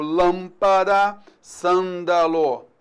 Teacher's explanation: quando ela é seguida de m ou n, então ela vai ser nasal